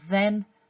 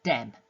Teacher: Not only is it changed, but it's changed from a fricative to a plosive. So it goes from the to d. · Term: th stopping, TH stopping